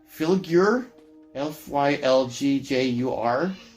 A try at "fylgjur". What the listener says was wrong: The J is a Y.